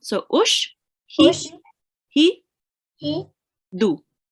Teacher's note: We do not prolong the alif because it's just the dhamma.